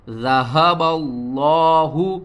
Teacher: ذہب اللہ، ذال زبر ذا، ہا زبر ہا، با لام زبر بل، لام کھڑا زبر لا، ہا پیش ہو، ذہب اللہ، لفظ اللہ سے پہلے زبر ہے، لفظ اللہ کو ہم موٹا کر کے پڑھیں گے، درمیان میں اس لام اور اس الف کو چھوڑ دیں گے۔